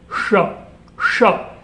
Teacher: और मूर्धा जो है उसको हमें और पीछे ले जाना पड़ता है, पूरी तरह से टंग को मोड़ करके और ऊपर जाकर के हिट करना होता है